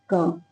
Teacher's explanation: क में अ की आवाज आपको आ रही होगी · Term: लघु